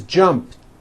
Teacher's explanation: unvoiced T so let's look at the word jump for example the final sound in Jump is a p which is unvoiced so when you put it in the past tense all you do is add a t so jump becomes jumped with a t sound at the end